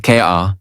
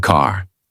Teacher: In American accent, you clearly hear the R. Car, not K-A, but car. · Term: American R sound